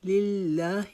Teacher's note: لا کو ایک الف کے جتنا لمبا کریں